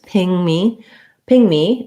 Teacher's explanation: Ping me, we would stress on the ping. And we have the I vowel, NG sound, and then tense E.